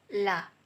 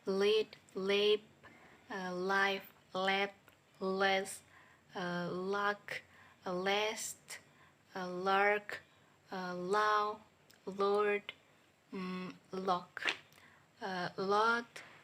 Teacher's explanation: voice alveolar lateral sound la